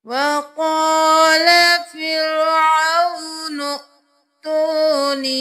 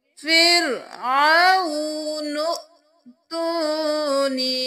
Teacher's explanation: یہاں پر ہم نون کے ساتھ حمزہ کو ملائیں گے، الف کو نہیں پڑھیں گے، جو حمزہ کے اوپر جزم ہے تو جھٹکا بھی دیں گے، فرعون ائْتونی۔